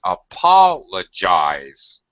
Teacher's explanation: It's loud, it's stretched, it has full pronunciation of the vowel. However, it's low pitch. It's low, very low. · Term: secondary stress